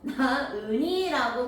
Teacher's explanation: 아이를 낳다에서 히읗이 있잖아요. 근데 우리 이 친구는 나흥이라고 하지 않고 나은이라고 발음하죠. 히읗을 없애고 발음했네요. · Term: 히읗 탈락